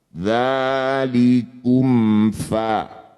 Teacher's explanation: Mim sukun bertemu fa. Mim sukun bertemu bukan mim bukan ba. Disebut bacaan izhar syafawi.